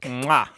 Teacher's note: bilabial lingual ingressive click